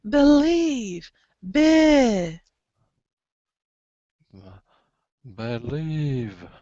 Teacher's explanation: You know it's not an E. It's not a schwa. It's a short I.